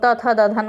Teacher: त थ द ध न, ये पूरा दंत होता है